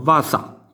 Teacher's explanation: Basiare, il baciare italiano, diventa in napoletano vasà, quindi vedete la B come si trasforma in V, per effetto di betacismo